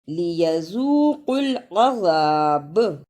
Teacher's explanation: عین پر زبر، اسے جلدی پڑھنا، زال پر زبر لیکن الف مدہ ہے، اس لیے اسے تھوڑا سا لمبا کرنا۔ عذا، با پر زبر، اسے جلدی پڑھنا لیکن رکنے کی صورت میں قلقلہ بھی کرنا